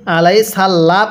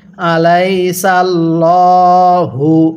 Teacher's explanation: অনেকে এই জায়গাটাতে ভুল করি, আলাই সাল্লাহ পড়ি, এখানে আল্লাহটাকে চিকন করে পড়ি। দেখুন, যদি আল্লাহ শব্দের লামের পূর্বে এরকম জবর থাকে তাহলে এই লামটাকে আল্লাহ অর্থাৎ মোটা করে পড়তে হবে। এখানে কিন্তু মোটা করে পড়তে হবে, কারণ আল্লাহ শব্দের লামের পূর্বের হরফের উপর জবর, তাহলে আলাই সাল্লাহু।